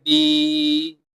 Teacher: یا کے ساتھ اگر جزم ہو، سکون ہو اور اس سے پہلے حرف کے ساتھ زیر کا اعراب لگا ہو تو اس صورت میں ہم یا کو ایک حرف جتنا لمبا کریں گے۔ تو یا کو ہم ایک حرف جتنا لمبا کریں گے اور اس کو پڑھیں گے با یا زیر بی۔ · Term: حروف مدہ